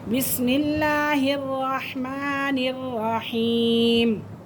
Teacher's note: या साकिन से पहले ज़ेर है तो ये या मद्दा है, तो इसे हम थोड़ा सा लॉन्ग कर सकते हैं